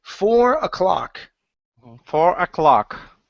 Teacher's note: So this is going to be, instead of cloak, it's an ah sound here.